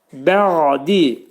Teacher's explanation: Ani müddətdə tormuzlanma. Boğazın ortasından çıxarırıq. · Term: Ayn